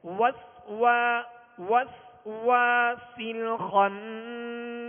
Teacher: واؤں کی ہونٹوں کی گلائی سے ادائیگی کریں گے